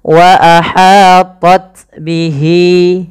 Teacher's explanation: panjangkan lafal hi 2 harakat karena ia mad silah qasrah ditandai dengan ha dhamir